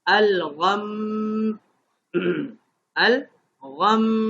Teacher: غنہ بھی ہونا تھا، میم تشدید والا ہے